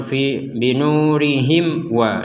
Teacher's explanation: Gak ada tasydid di atasnya wawu, berarti ini sangat jelas dan harus jelas 100% jelas. Tidak ada dengung, tidak ada dimasukkan, tidak ada samar. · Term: Mim mati bertemu wawu